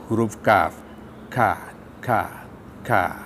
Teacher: jika pangkal lidah ketemu langit-langit dekat tenggorokan, ya, maka akan muncullah huruf kaf, k, ya. Jika pangkal lidah ketemu dengan langit-langit agak ke belakang lagi dibanding kaf, akan muncul huruf qaf.